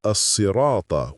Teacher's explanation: The correct form is as-sirata with emphatic sa, not sa or sha.